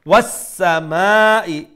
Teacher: make sure you have that whistling sound that is one of the characteristic the sifat in that sin